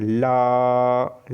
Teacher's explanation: ल जो है दोस्तों पार्श्विक व्यंजन की श्रेणी में आता है, क्योंकि इसमें वायु जो है जीभ के दोनों पार्श्वों से निकलती है।